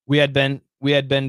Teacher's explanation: this pronunciation a lot of students want to say bean but no american says bean we say ben ben ben or bin bin